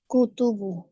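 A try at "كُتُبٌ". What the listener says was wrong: কুতুবুন, এখানে তানবিন হবে।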